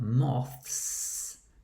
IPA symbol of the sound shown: s